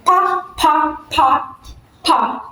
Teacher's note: So 2 lips are pressed together. That's the meaning of bilabial.